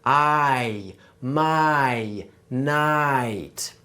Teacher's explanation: So, in standard English, there's what we call a diphthong in words like my, nice, and night. Can you hear how that I sound is actually two sounds pushed together?